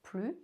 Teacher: Pronounce PLUS as /ply/ (no S sound)